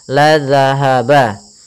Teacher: za-nya hati-hati, jangan terbaca dengan bacaan za kembali, tapi dia zal